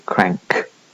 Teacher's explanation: you can get a velar nasal in front of a velar plosive as in crank okay there are other restrictions to be seen